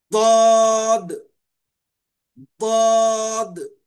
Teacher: 8واں مخرج ضرسی، بازوئے زبان کا کنارہ اور اوپر کے سیدھے یا بائیں داڑھوں سے ایک حرف ضاد نکلتا ہے